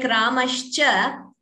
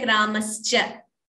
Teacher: That Sha and Cha, when they are combined, we should be careful to retain it as Sha and not chant it as Sa.